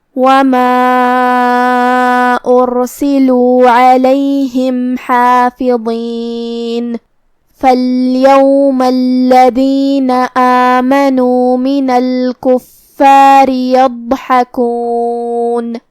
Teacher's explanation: آخر میں یہاں حرف الرا ہے، را کا حکم ہے ترقیق، مطلب ہمیں اسے ہلکی آواز میں پڑھنا ہے کیونکہ اس کے نیچے زیر ہے